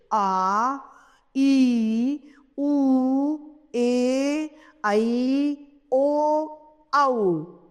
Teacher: जिनको बोलने में ह्रस्व स्वर से अधिक समय लगे, वे दीर्घ स्वर कहलाते हैं।